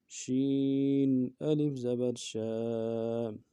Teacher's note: شین حروف تفشی میں سے ہے، واضح کرنا ہے، اس کو واضح کریں گے شین کو۔ شین الف زبر شا، الف مدہ ہے، ایک الف مدار میں کھینچیں گے اس کو۔